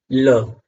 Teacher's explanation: इसकी आवाज जो होती है ना, जीभ के बगल से निकलती है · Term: पार्श्विक व्यंजन